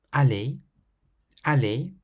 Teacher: you pronounce the ER like A, as though it were an AY, A. This means you don't hear the R sound on these words.